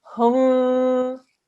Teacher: We join the ha and the meme, and we do 2 seconds on the meme.